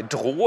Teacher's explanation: Sie haben ein Plosiv, minimale Sonorität, dann liquide, verdammt hohe Sonorität, aber es geht immer noch höher zum Vokal. Und da geht es dann nicht mehr höher.